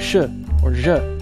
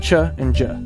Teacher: the post alveolar area gives us things like shi or je or the affricates cha and ja